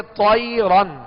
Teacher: طا حروف مستعلیہ میں سے پر پڑھیں گے